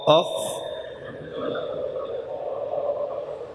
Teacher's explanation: تو حا وسط حلق سے ادا ہوا اور خا ادنی حلق سے